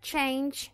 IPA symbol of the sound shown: dʒ